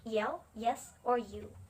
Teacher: And the next one is palatal approximant. The sound is made by the middle of the tongue, almost touching the palate. Nah, kalau palatal ini keluarnya dari lidah bagian tengah dan langit-langit atas, tapi tidak tersentuh, hanya mendekati.